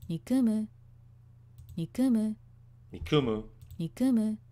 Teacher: the higher pitch is on the second syllable and then it goes down, like you can hear with the voice as well. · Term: pitch accent